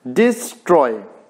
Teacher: डी को हमने हल्के से बोला तो ये अनस्ट्रेस्ड सिलेबल हुआ, और स्ट्रॉय में आवाज उठानी पड़ी इसीलिए ये स्ट्रेस्ड सिलेबल है